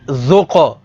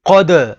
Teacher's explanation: قاف حروف قلقلہ میں سے ہے تو یہاں پر قلقلہ کریں گے